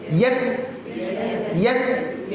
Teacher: ta ni tahan suara lepas nafas.